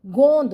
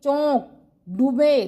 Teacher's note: दोनों से आवाज आ रही है मुंह और नाक से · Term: अनुनासिक